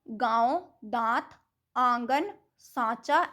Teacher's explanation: जिस ध्वनि के उच्चारण में हवा नाक और मुख दोनों से निकलती है उसे अनुनासिक कहते हैं।